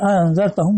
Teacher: وقرأ انذرتہم بتحقیق الحمزتین، اور انذرتہم دونوں حمزہ کی تحقیق کے ساتھ پڑھا گیا ہے